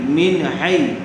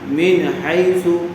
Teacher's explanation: نون ساکن کے بعد حروف حلقی میں سے حایا ہوا ہے، اس لیے بغیر غننے کے جلد اظہار کر کے پڑھیں گے۔